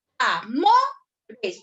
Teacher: Dónde lleva la mayor fuerza de voz va en mo